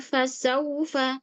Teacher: Kemudian fasaufa di sini ada harfulin diperjelas wau sukunnya berbunyi huruf U